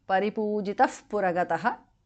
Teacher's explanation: visarga changes to upadhamaniya